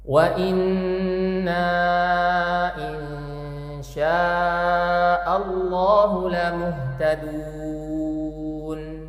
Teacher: suara Nun sukunnya kita samarin karena di sini ada hukum bacaan ikhfa Hakiki · kita samarin karena di sini ada hukum bacaan ikhfa Hakiki dan syinnya kita panjangin empat atau lima harakat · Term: mad wajib muttasil